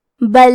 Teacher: کلمت بل میں لام ساکن کو ظاہر کریں گے